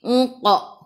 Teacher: Qaf qalqalah surah lantunannya kecil.